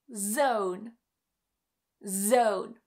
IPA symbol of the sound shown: z